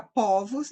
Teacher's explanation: no plural fica povos, então é uma vogal aberta